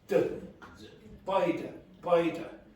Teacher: it's a d sound with air coming out · Irish people don't pronounce which sound in that sentence very clearly for you? TH. So the TH sounds like d